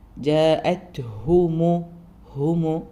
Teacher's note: സുക്കൂനും വന്ന താന്റെ സുക്കൂന്റെ സൗണ്ടും കൃത്യമായി ഉച്ചരിക്കുക കാറ്റോട് കൂടിയിട്ട് തന്നെ പറയണം പിന്നെ വരുന്ന ഹാനും മീമിനും ഒക്കെ ളമ്മി ആണ് അപ്പൊ ചുണ്ട് നന്നായി റൗണ്ട് ആക്കുക